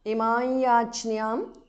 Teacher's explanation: Imam yachnyam Imayachnyam because of Sandhi Anuswara changes to the nasal of Ya.